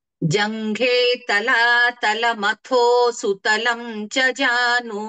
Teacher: తలాల మతో అన్నప్పుడు మహాప్రాణాక్షరంగా తో అనాలి